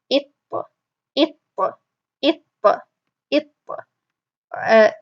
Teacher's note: The stream of air only comes when you release, not when you're pronouncing the letter itself. Tip of the tongue goes up.